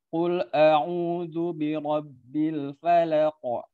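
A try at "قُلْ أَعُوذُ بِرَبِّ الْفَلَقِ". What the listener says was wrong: Falaq, cepat. Jangan falaq. Seakan-akan nanti ada tambahan kayak huruf alif atau hal lain. Cepat al-falaq karena semua satu huruf.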